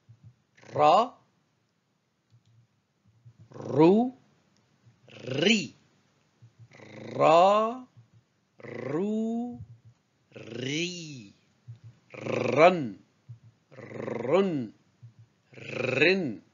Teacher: se prononce au niveau de la pointe de la langue qui vient toucher les dents en produisant un effet de vibration par l'effet du passage de l'air c'est l'équivalent de Ra de l'anglais et de l'espagnol tel que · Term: R roulé